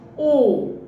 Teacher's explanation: जैसे आप ऊ बोलिए, ऊ, ऊ, ई, मुंह मतलब लगभग आपका बंद ही है, थोड़ा बहुत खुल रहा है संवृत स्वर में। और अर्ध संवृत स्वर में मुंह थोड़ा सा खुलता है, जैसे ओ थोड़ा सा खुला ना, ओ, ए थोड़ा सा लगभग खुलता है अर्ध संवृत स्वर में।